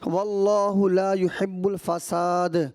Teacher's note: واللہ لا حرف مدہ ہے نا، اس کو ایک الف کے برابر ہی کھینچنا تھا